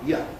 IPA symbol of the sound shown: j